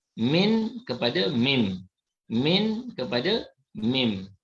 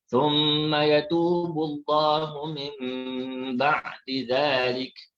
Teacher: Jadi dia menukarkan bunyi nun mati. Bunyi nun ditukarkan kepada bunyi mim. Jadi kalau kita bunyikan min, akhirnya bila iqlab dia jadi mim.